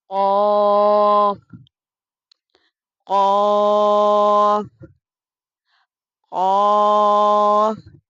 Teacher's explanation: قاف زبان کی جڑ اور تالو کے نرم حصے سے ادا ہوتا ہے۔